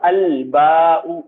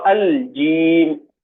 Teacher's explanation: تو جب الف لام کسی ایسے اسم پر آتا ہے جس کا پہلا حرف قمری ہو تو لام صاف صاف پڑھا جاتا ہے، کوئی ادغام یا تشدید یہاں پر نہیں آتی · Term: حروف قمری